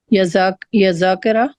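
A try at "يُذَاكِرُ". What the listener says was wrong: ہاں، حرکات صحیح نہیں بولی آپ نے. یوزا یوزاکرو، ٹھیک ہے.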